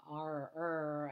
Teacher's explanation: the english kind of rounded tongue r